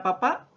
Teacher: termina en una vocal A tónica